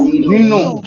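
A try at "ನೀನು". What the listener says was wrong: One mistake people usually make is they will say Ninnu. There is no word called Ninnu. It is Neenu. Neenu.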